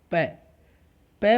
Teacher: पै बोलने के लिए हमें दोनों ओष्ठों को मिलान करना पड़ेगा, बिना मिलाए हम नहीं बोल सकते।